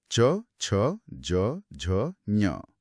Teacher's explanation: जब इनका उच्चारण किया जाता है तो जीभ का बीच का हिस्सा एकदम सपाट होकर मुंह के छत के इस पिछले हिस्से यानी तालू से जा टकराता है। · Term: च वर्ग, तालव्य